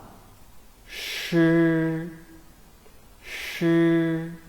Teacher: we should roll up the tip of the tongue very close to the hard palate without totally blocking the air and letting the air squeeze out through the channel.